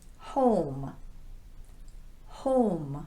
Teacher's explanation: this is the very rounded long o sound